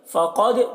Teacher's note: فقد، قوف کو پر پڑھیں گے، حروف مستعلیہ میں سے ہے، اور دال میں قلقلہ ہوگا، دال کی آواز میں ایک قسم کی جنبش ہوگی